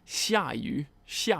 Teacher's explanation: fourth tone third tone